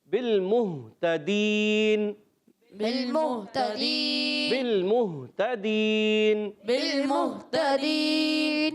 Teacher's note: تو ہا کو کلیئر کرنا ہے حلق کے نیچے والے حصے سے. تا پر زبر ہے، حرکات کو بغیر کھینچے ہے. · بالمہتدین میں با کو لام سے ملانا ہے، لام کو ہلانا نہیں